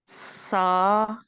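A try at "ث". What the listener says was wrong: सा को बहुत नरम से सा को बहुत नरम से ऐसे नहीं लगाना, ठीक है। सा को अदायगी में बहुत नरमी से अदा करना है।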